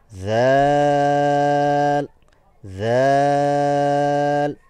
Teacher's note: জিহ্বার অগ্রভাগ সামনের উপরে যে দাঁত আছে সেই দাঁতের সাথে স্পর্শ হবে এবং সামনের অংশ সামান্য পরিমাণ বের হয়ে আসতে হবে এবং বাইরে থেকে যেন দেখা যায়।